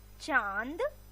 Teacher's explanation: इसके उच्चारण में नाक और गले दोनों का प्रयोग होता है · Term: अनुनासिक